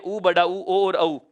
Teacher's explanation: वे स्वर जिन्हें बोलते समय होंठ वृत्त के आकार में गोल खुलते हैं या वृत्त की तरह मुख हो जाता है, उसे वृत्ताकार या वृत्तमुखी स्वर कहा जाएगा।